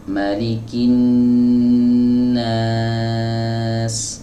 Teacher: huruf lam ini juga tidak dibaca kalau setelahnya ada tasydid. Ya, setelahnya ada tasydid, huruf setelahnya bertasydid, maka huruf lam yang ada di sini tidak dibaca. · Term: idgham syamsi